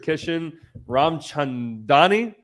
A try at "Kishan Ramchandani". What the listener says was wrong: Close enough. Ramchandani, close enough. little bit more emphasis than you need.